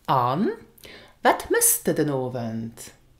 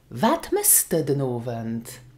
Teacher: it is very common in spoken Luxembourgish and in questions to use the weak form of du, which is de